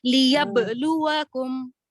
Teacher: बा पे आवाज टूटना, फिर लाम जी की आवाज अलग से निकलना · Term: हुर्फ खलखला